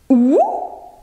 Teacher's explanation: Lèvres arrondies, ou, le son se forme en arrière de la bouche.